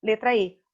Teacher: Nós gaúchos temos esse som mais fechado, letra E.